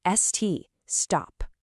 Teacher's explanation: that S sound s and the T sound T are right next to each other. There's nothing in between.